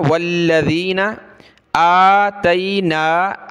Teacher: حمزہ کو کھینچیں گے ایک الف کی مقدار، اور نون کو دونوں پر کھڑا زبر ہے.